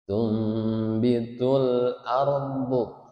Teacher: Mengganti suara nun menjadi suara mim, makanya disebut iqlab ya.